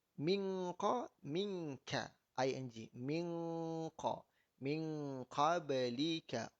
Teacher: Nun mati bertemu qaf dengan nun mati bertemu kaf maka kaedah dia gunakan ing.